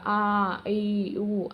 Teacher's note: Second letters ఉంటాయి కదా ఆ ఈ ఊ అవి దీర్ఘాలు వాటిని దీర్ఘాలు అంటాం. ఇవి రెండు మాత్ర కాలంలో ఉచ్చరించబడతాయి